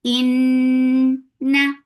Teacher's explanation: Noon will get sifa of gunna. This gunna is akmal, so keep the sound in your nose for a longer time.